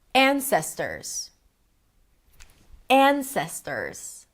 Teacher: An, primary stress, long, ses, right there in the middle, secondary stress, ters, short. Ta-da-da. Ta-da-da.